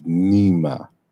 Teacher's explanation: the L becomes N through a process of assimilation. So the L assimilates to the following M.